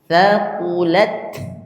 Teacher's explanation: Ingat, ta itu hams. Ta itu berhembus anginnya.